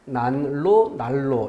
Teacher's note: 앞말의 받침 니은이 리을로 바뀌는 방식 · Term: 유음화